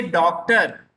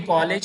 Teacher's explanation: इनको बोलते समय इनकी ध्वनि आ और ओ के बीच की निकलती है। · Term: अर्धचंद्राकार